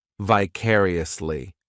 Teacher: This adverb has 5 syllables, and the stress is on that second syllable, vicariously. The third syllable, it's like that letter I just has that E sound, and the fourth syllable has the schwa, vicariously.